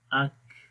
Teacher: کاف کے اندر صفت ہم، سانس جاری رہے گا